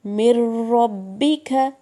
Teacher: مر را کی ڈبل ساؤنڈ، را میم سے ملے گا اور اپنی ساؤنڈ بھی دے گا